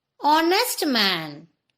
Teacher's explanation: the word starts with a consonant H, but it does not start with sound of H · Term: H is silent